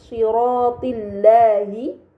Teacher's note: maka lam tersebut dibaca secara tipis